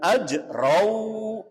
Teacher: itu jim yang sukun, hukumnya dibaca qalqalah. Qalqalah artinya nyeklok atau mantul.